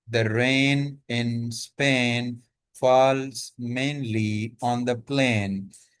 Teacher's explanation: The long A sound is repeated to create rhythm.